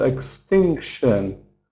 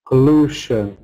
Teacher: Stress before the suffix. Stress before shun.